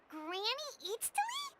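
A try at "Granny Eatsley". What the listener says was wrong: Yes, Granny Eatstly. But Put emphasis on Eatsley, not Granny.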